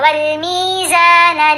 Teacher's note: میم اور زا دونوں کو لمبا کیا، میزان دونوں کے ساتھ حروف مدہ ہے